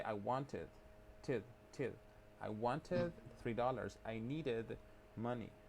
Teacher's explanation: Pero no es así como regla de que es ed. El sonido es id, pero es una i bien cortita.